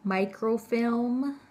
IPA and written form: ˈmaɪkroʊfɪlm (microfilm)